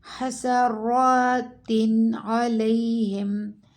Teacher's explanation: اظہار جب ہم کریں گے تو ہم نے یہاں پر نون کا اظہار کرنا ہے، مطلب ہم نے حرف کو چھپانا نہیں ہے۔